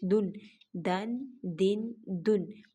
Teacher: دال کو بھی نرمی کے ساتھ اور دال کو موٹا بھی نہیں کرنا اور کھینچ کر بھی نہیں پڑھا جائے گا۔